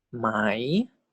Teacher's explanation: So high class default tone is tone 4.